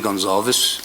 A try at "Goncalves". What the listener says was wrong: But the way you pronounce the surname is you don't pronounce the V. pronounce it Goncalves.